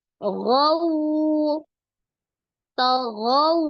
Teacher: Maka sempurnakan dulu harokat fathah di huruf ghain, gha. Kemudian waw sukunnya dimajukan kedua bibir. Diucapkan dengan lembut ya.